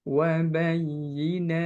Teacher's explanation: Untuk huruf ta, hati-hati ada suara sin tambahan atau sin sukun. Ta itu ketika sukun sifatnya syiddah, suaranya tidak menampak atau tertahan, kemudian diikuti dengan udara yang mengalir, hamas. Jadi syiddah, hamas.